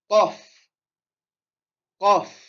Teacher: Et là, le Qaf, on le sort de la gorge.